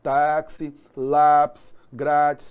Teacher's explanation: Lembrando então que é a penúltima sílaba tônica, né?